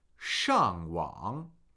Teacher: we're going to listen for a falling tone and then a falling rising tone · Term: Fourth tone. Third tone.